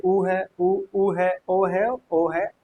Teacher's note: इनका उच्चारण करते समय हमारे होठ वृत्त की आकृति में खुलते हैं। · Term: वृत्ताकार स्वर